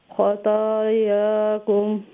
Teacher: ता भी full mouth letter है, इसमें भी से इस्तेआला है। ता के ऊपर स्टैंडिंग फतह मुकद्दरा, या के ऊपर भी स्टैंडिंग फतह मुकद्दरा है। इन दोनों को दो लंबा करके पढ़ेंगे।